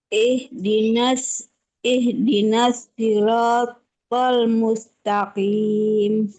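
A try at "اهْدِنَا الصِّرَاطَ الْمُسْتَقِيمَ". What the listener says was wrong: Nah, shotnya ini harus ditebelin, jangan si, ihdinas si, jangan si ya, tapi si, si. Bedanya apa shot dengan si ini?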